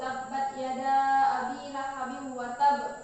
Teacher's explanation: qalqalah yang paling berat, yaitu huruf qalqalah yang ditasydidkan dalam keadaan waqaf